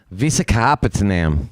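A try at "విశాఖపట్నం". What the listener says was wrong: Patnam. There's no Patanam. It's Patnam.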